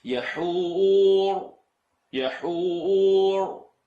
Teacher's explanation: There's a ra, and I'm rolling it only so you can hear it.